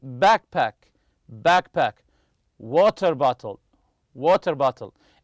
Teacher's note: the stress goes on the first part of the compound noun